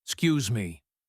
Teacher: The e at the beginning is gone.